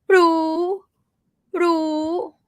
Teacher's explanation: Thai learners usually do it as rising รู้ รู้ which is wrong. It's supposed to be high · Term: high tone